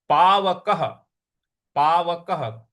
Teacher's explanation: क के बाद जो विसर्ग है उसका उच्चारण हमें ह ले आना है, क्योंकि उसके आगे कोई भी अक्षर नहीं है।